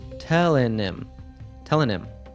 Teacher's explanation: When we have pronouns like him, her, and them, we often cut the first consonant sound.